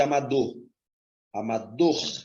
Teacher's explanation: a última é mais forte